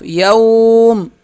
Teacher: وقف میں تھوڑا کھینچیں گے ایک الف کی مقدار، اور میم پہ ساکن ہو جائے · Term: میم ساکن